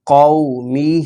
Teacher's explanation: واو لین کو لمبا نہیں کریں گے اور کھڑا زیر کو لمبا کریں گے